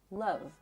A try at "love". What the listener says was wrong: So sometimes you tend to swallow it a little bit. So like I think you hold some tension here. Love.